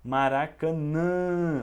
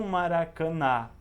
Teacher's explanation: olha o som sai pelo nariz hum som nasal e não maracana não é ele não é